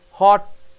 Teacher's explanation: Air doesn't come out. T is held there up in the tongue.